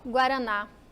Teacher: ela tá mais forte aqui no final OK ela é oxítona